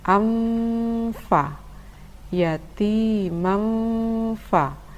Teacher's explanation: Tanwin bertemu dengan huruf fa dibaca dengung dan samar. Samar maksudnya adalah samar antara tanwin dan huruf fa.